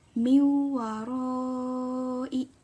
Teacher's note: dengan huruf wau maka disitulah letak hukum bacaan Idgham Bighunnah nya dibacanya memasukkan dengan dengung